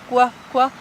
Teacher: mientras están pronunciando la K, ya están poniendo los labios como para una U.